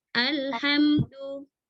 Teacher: haknya harus benar-benar dari wasatul halqi ya. Ha itu wasatul halqi.